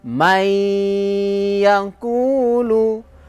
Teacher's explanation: Ustad bilang idgham artinya masuk Bighunnah dengan deng dengung contohnya nih masukkan suara nun sukun kepada ya pada huruf yang hidup setelahnya dan berdengung pada huruf pertama sehingga menjadi panjang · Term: Idgham Bighunnah